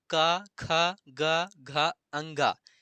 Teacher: क वर्ग का उच्चारण स्थान क्या है कंठ है